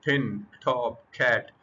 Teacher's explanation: पिन टॉप कैट फिर puff of फेयर महसूस होगा। That puff of air is called aspiration.